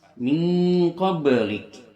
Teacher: Kaf ada huruf hamznya dan dia kaf ini memiliki sifat hamz. Ketika dia dibaca ada hembusan napas.